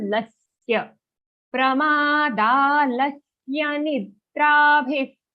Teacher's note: Aghat on la. That's why we are putting extra stress on that letter.